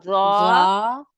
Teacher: इसके लिए जा जुबान की जड़ भी उठाए ना, मोटा करें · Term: नरम जा है लेकिन मोटा